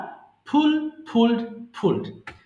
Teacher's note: you have to keep your lips together টু pronounce ফ sound